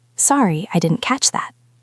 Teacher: We want to stress the word catch.